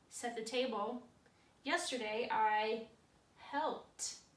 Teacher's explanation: our last word is help there's that P that unvoiced sound